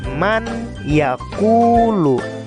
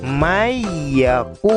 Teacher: karena di sini ada nun sukun bertemu dengan ya, maka bunyi nun sukun tersebut dimasukkan ke dalam huruf ya. Mayyaqulu. Jadi bunyi nun sukun tersebut hilang, dimasukkan ke dalam huruf ya. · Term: idgham